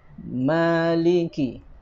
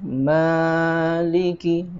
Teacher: dua harokat atau ukurannya satu ayunan melingkar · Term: Mad Thobi'i